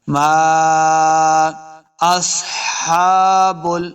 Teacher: میم کے آگے الف ہے، اس کے اوپر چھوٹی ماد ہے تو ہم نے اس کو لمبا کرنا ہے